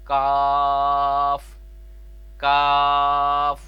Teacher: زبان کی جڑ اور تالو کے سخت حصہ سے۔ جو بڑا کاف تھا موٹی آواز والا، وہ قوف، وہ نرم تالو سے، اور یہ جو باریک کاف ہے باریک آواز والا، یہ سخت حصے سے تالو کے ادا ہوتا ہے۔